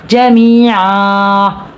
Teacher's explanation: می پہ یا مد اور 1 الف کے برابر کھینچیں گے. 2 زبر کو وقف میں ہم ایک زبر یعنی الف مدہ سے بدل کر پڑھیں گے تو یہاں پہ 1 الف کے برابر کھینچیں گے.